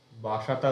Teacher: ছিল মানে ত আগে ছিল স পরে ছিল সেটা চেঞ্জ হয়ে স আগে চলে এলো ত টা পরে যাচ্ছে